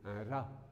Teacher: Vous pouvez le prononcer d'une manière roulée. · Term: R roulé